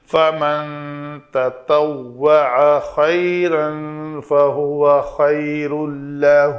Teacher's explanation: یہاں پہ تنوین کے بعد لام ہے تو ادغام کامل، تو تنوین پڑھنے میں باقی نہیں رہے گی